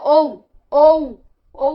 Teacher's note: কণ্ঠও লাগছে আবার ওষ্ঠও লাগছে, ঔ, ওষ্ঠ, আমাদের ওষ্ঠও দরকার হচ্ছে আবার কণ্ঠও দরকার হচ্ছে, তাই এটা হচ্ছে কণ্ঠস্থ বর্ণ।